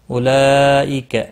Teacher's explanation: اولئک مد متصل ہے، 4 الف کے برابر کھینچ کر پڑھیں گے